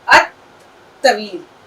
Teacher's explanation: توئے کی آواز دو بار نکلے گی، لام کے بعد جو حرف آتا ہے وہ اس کے اوپر تشدید لگ جاتی ہے